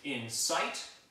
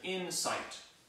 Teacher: the first one is usually said like this in sight with the accent on the second syllable and the other one is an insight with the accent on the first syllable